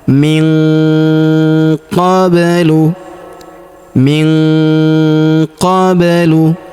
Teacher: Huruf nun sukun bertemu huruf qa, maka nun sukunnya melebur ke huruf qa. Kita tahan dan kita dengungkan 2-3 harokat. Kita baca dengung dan samar ya.